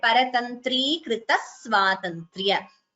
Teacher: So you have dvitvam, double sound before s. So two s's are heard.